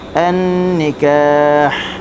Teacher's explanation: Okey, balagun nikah huruf nun bertasydid, kita kena baca dengan gunnah 2 harakat